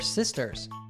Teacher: the first s is pronounced with a s sound while the final s is pronounced with a z sound